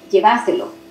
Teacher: En ese lugar, la tilde no sería en llévaselo, sino en lleváselo, el énfasis sería en va, y ahí se llevaría la tilde.